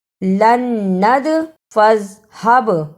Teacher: دال اور با جزم کی صورت میں حرف قلقلہ ہے، یعنی ان حروف کو ہلا کر پڑھنا ہے